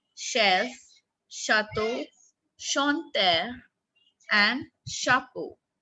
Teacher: But in other words, it is k, like comment, cafe, car. Then, in French, CH has the sound of sh, not as ch